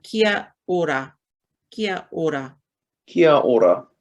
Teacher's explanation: like a soft D sound with the O-R-A